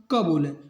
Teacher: जिन व्यंजनों के उच्चारण में मुख से कम हवा निकले उसे क्या कहते हैं? अल्पप्राण। जैसे हम क बोलें तो क में क्या होता है कि कम हवा निकलती है।